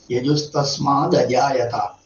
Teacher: തകാരത്തിന് ശേഷം സ്വരാക്ഷരങ്ങൾ ആരംഭിക്കുകയാണെങ്കിൽ അത് ദ എന്നാവും. ആണെന്ന് വെച്ചാൽ ദ, ആണെന്ന് വെച്ചാൽ ദ, ഈ എന്ന് വെച്ചാൽ ദി, ഊ എന്ന് വെച്ചാൽ ദു മുതലായവ.